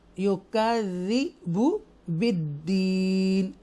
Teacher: या साकिना से पहले ज़ेर है, इसलिए हम इसको स्ट्रेच करके पढ़ेंगे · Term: या मद्दा